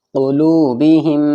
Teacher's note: میم ساکن کے بعد دوسرا میم آیا تو ادغام شفوی ہوگا، غننے کے ساتھ پڑھا جائے گا